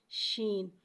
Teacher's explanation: شین میں تفشی والی سیٹی کو ظاہر کریں گے